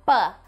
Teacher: Isso é uma oclusiva bilabial. Por quê? Porque há uma obstrução na passagem do ar entre os lábios. Então, houve essa obstrução, o ar vinha, e aí eu tranquei ele aqui nos meus lábios e explodi.